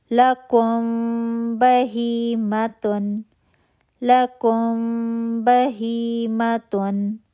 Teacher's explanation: میم ساکن ہے، فوراً اگلا حرف دیکھا با، پیپر تھن گیپ 2 کاؤنٹ کا غنہ